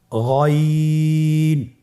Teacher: গইনের মাখরাজ কোন জায়গায় আপনারা স্ক্রিনে দেখতে পাচ্ছেন, ছবিতে দেখা যাচ্ছে। গইন হরফটি উচ্চারিত হয় কণ্ঠনালীর শেষ ভাগ হতে।